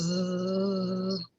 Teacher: when you make the Z, you'll feel vibration because you're using your vocal cords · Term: voiced sound